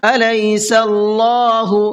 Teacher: اللہ کے لام کو منہ بھر کے پڑھیں گے اس لیے کہ اللہ کے لام سے پہلے سین کے اوپر زبر ہے اور اللہ کے نام سے پہلے زبر ہوتا ہے تو اللہ کے نام کو تھوڑا سا منہ بھر کے پڑھتے ہیں، صلی، اس طریقے سے۔